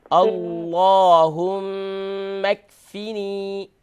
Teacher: یہاں کیف کے اوپر قلقلہ نہ کریں, کنٹرول کریں.